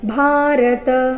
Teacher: ಭಾರತ ಭಾ ಮಹಾಪ್ರಾಣ ದೀರ್ಘ ಬರಬೇಕು